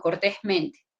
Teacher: la sílaba tónica, la que resalta en cortésmente, sería el sonido tes y el sonido men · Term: dos acentos